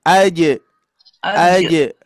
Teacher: Rasakan tuh, ya, tengah lidahnya menyentuh ke langit-langit.